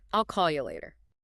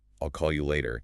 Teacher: I'll and ya are just quick little bridges between the two main beats. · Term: reduction